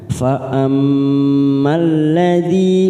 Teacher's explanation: mim yang bertasdid kita tekan 3 ketuk bacaan gunnah